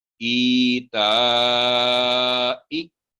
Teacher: तो ई जब अलिफ के अलिफ के नीचे कसरा है तो या पर जज़म आ गई, तो ई 2 सेकंड की आवाज की लंबाई हो गई